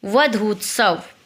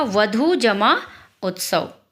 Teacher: वधू में क्या है, बड़ा ऊ है अंतिम अक्षर, और दूसरे में पहला अक्षर क्या है, छोटा ऊ। बड़ा ऊ और छोटा ऊ मिला करके क्या बन गया, बड़ा ऊ। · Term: दीर्घ संधि